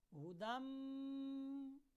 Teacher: تو تنوین، تو نون تنوین اس کو کہا جاتا ہے۔ تو نون تنوین کو ہم نے میم کے ساتھ ملایا، ہدم، دیکھیں گنہ ہو رہا، ہدم من ربہم، من ربہم، میم زیر نون من، میم زیر نون را، مر، را زبر با، رب، با زیر بی، مر ربی، ہا زیر میم ہم، مر ربہم، مر ربہم، مر ربہم۔ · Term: ادغام بالغنہ